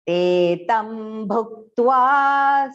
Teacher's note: te long first, okay? Do not make it short.